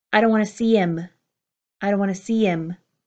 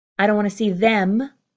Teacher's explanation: If I was saying I don't want to see him, you would hear more of an im.